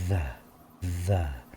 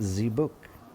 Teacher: there's vibration in my teeth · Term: th sound